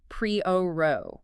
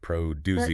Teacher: Like the word produce for fruits and vegetables. The stress is on the first syllable. Pre-o, not producey.